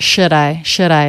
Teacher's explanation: the d is a flap sound because it comes between two vowels or diphthongs